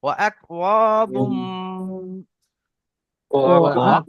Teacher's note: মিম দু পেশ বুম ঠোঁট দুটো বন্ধ হয়ে যাবে